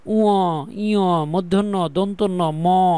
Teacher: কিছু কিছু বাতাস বের হওয়ার সময় নাকের ছিদ্র দিয়েও বের হয়, তাই এদেরকে নাসিকধ্বনি বলে। উ, ইয়, মূর্ধন্য, দন্তন্য, ম প্রত্যেকটাই নাকের মধ্যে চলে যাবে।